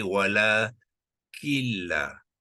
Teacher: Jadi sukun tu dihilangkan sebab nun ni telah dimasukkan ke dalam lam. Jadi nun ni tidak lagi dibaca di dalam bacaan, tidak disebut dalam bacaan, sebab itulah dia dihilangkan tanda sukun tu. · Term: idgham bila gunnah